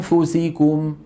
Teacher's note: يعني الغنة تخرج والفم مهيئ على مخرج الفاء، لكننا لم ننطق فاء. ولما أقول فوسيكم الفاء الآن منطوقة وليس فيها غنة، وهذا تتمة التعريف مع بقاء الغنة في الحرف الأول.